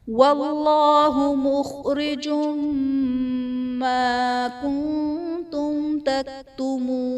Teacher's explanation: کنتم میں نون ساکن کے بعد حروف اخفا میں سے تا ہے تو یہاں پر اخفا کا قاعدہ ہوگا، یعنی تنوین نون ساکن میں ہم غنہ کر کے پڑھیں گے · وَاللَّهُ مُخْرِجٌ مَا كُنتُمْ تَكْتُمُونَ، مخرجم ما میں جیم پر دو پیش کی تنوین، تنوین کے بعد حروف یرملون میں سے میم ہے تو یہاں پر ادغام مع الغنہ کا قاعدہ ہوگا، یعنی تنوین میں ہم غنہ کر کے پڑھیں گے